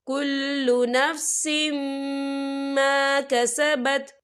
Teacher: سین کے نیچے تنوین ہے، تنوین کے بعد جو ہے میم آ رہا ہے، اور میم جو ہے حروف ملون میں سے ہے تو یہاں پر ادغام ہوگا، تو ہم اسے غنے کے ساتھ پڑھیں گے